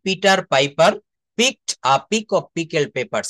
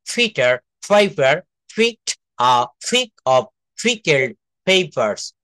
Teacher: পি কে আমরা ফ বলবো, প, ফ, ব, ভ। একটা অল্প প্রাণ ধ্বনি, একটা মহাপ্রাণ ধ্বনি